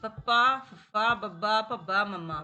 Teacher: ਜਿਨਾਂ ਨੂੰ ਬੋਲਣ ਦੇ ਵੇਲੇ ਆਪਸ ਦੇ ਵਿੱਚ ਬੁਲ ਨੇ ਉਹ ਟਕਰਾਉਂਦੇ ਨੇ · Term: ਕੋਠੀ ਧੁਨੀਆਂ